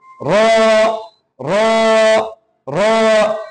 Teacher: জিহ্বার আগার পেট তার বরাবর উপরে তালুর সঙ্গে দিয়ে জিহ্বার আগার পেট এবং তার বরাবর উপরে তালুর সঙ্গে লাগাইতে হবে।